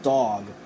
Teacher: now try saying the ah sound with rounded lips you'll hear an awe sound as in the word dog and that word you see that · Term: aw sound